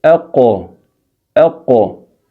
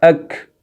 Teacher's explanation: جیسے مثلا قاف کا مخرج آپ سمجھنا چاہتے ہیں، آپ کہہ دیں اقو، اقو، تو جہاں سے یہ حرف ادا ہوا وہی اس کا مخرج ہے، وہ آپ کو معلوم ہو جائے گا۔ اور اس اق سے تھوڑا سا آپ زبان کی طرف آ جائیں تو اس سے ادا ہوگا اک